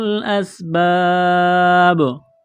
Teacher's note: سین میں سیٹی کی آواز پیدا کریں گے ، جب یہاں پر وقف کریں گے تو با ساکن ہو · جب یہاں پر وقف کریں گے تو با ساکن ہو جائے گی، با پر قلقلہ کریں گے